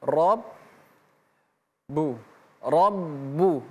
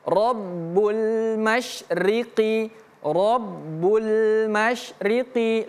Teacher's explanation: membacanya ada dua bunyi huruf ba yang harus kita sebutkan. R bu rbu dengan syarat tidak boleh putus seperti ini.